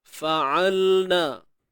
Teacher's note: huruf ain tengah kerongkong sempit kan?